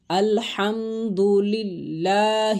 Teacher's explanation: اس میں جلالت اللہ عز و جل کے لام سے پہلے مکسور حرف ہے، تو لام کو باریک کر کے پڑھا جائے گا